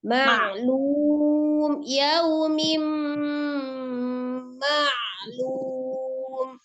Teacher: Nah, ma-nya tidak ke hidung, tidak ma. Ma-nya tetap ma.